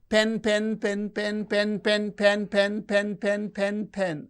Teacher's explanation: the pitch is fluctuating it is going up and coming down going up and coming down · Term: pitch variation